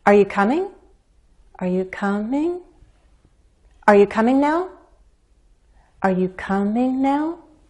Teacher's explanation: Each unstressed syllable after a stressed one is a chance to step up even higher in pitch. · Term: rising intonation